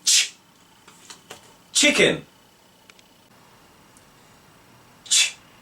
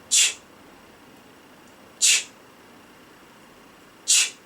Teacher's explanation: この音はチュの音に似ています。口を突き出して息だけ吐き出す音です。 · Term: ch sound